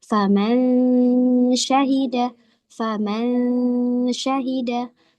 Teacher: Faman syahida faman syahida manja man, jadi disertai dengan gunnah dari hidung. Jadi bukan manja manja manja man, harus ada gunnah dari hidung.